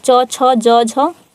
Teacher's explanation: च, छ, ज, झ, ये तालु से उच्चारण हो रहा है इसका